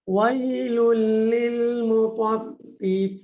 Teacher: কাফ উচ্চারণ করার সময় একটু বাতাস বাহির হবে